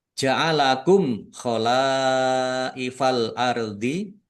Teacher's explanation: Mim sukun bertemu dengan huruf ko. Bacaan izhar syafawi dibaca jelas.